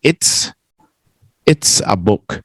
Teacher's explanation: The it, but here we don't finish that T, right? We go up to the it, and it's not that our voice stops, it's that our tongue blocks the sound. It makes that little change in the sound.